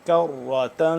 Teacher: کاف باریکی سے اور ساتھ ہی را ہے، اس کو ہم موٹا کر کے پڑھیں گے